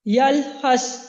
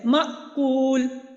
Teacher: یہاں پہ سانس جاری رہتا ہے، جبکہ جو مأکول، آواز جو مضبوطی کے ساتھ ٹھہری ہے کہ ہمارا سانس بند ہو گیا ہے